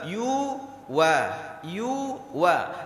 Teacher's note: Durasi membaca yu dengan wa sama. Tidak boleh yu wa.